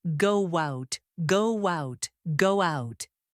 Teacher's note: When said naturally, native speakers add a soft W sound.